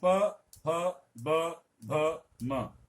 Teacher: आपके ओठ जो हैं अपने आप ही जुड़ेंगे, तभी इनका उच्चारण संभव है। आप दोनों ओठ खोल करके अगर उच्चारण करने का प्रयास करेंगे तो इनका पांचों का उच्चारण संभव नहीं है। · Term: ओष्ठ